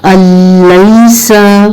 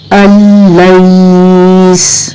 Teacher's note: आप नून को तो स्किप करेंगे और जो शुरू का जो हमजा है उसको लाम के साथ ज्वाइन करेंगे, लेकिन एक और चीज आप नोट करें कि यहाँ गुन्ना की कैफियत नहीं है।